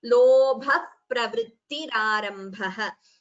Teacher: Lobha pravritti, visarga followed by pa, upadhmaniya. So it becomes lobha pravrittirarambha.